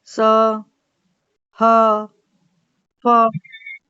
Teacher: निकल रही है ना हवा बाहर संघर्ष करके, तो इनको संघर्षी बोला जाता है।